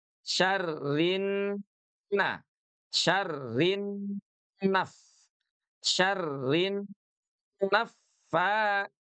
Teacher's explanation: Gunah musyaddadah dia harus ditahan selama dua ketuk.